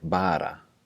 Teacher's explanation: the flapped R would sound more like bara, and it's more just like a tap